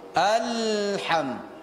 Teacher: Di Alhamdulillahi Rabbil Alamin, Alham memantulkan huruf lam yang mati. Huruf lam ini ujung lidah mengenai gusi atas. Alham, matikan dia, tekankan dia di makhraj, baru setelah sempurna itu baru dicabut atau baru diangkat.